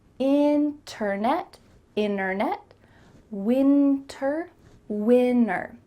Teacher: we're cutting out that T, especially when there's an NT in the middle of a word.